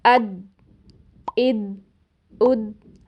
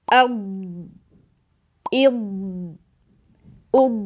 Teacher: جب ہم ادنیٰ حافہ یعنی زبان کے اگلے کناروں کو بھی پریشر دیتے ہیں، تو ہمیں پھر ضاد کی بجائے دال کی آواز سنائی دیتی ہے